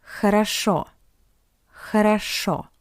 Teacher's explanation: Because the first two O are unstressed, that's why we pronounce it as A.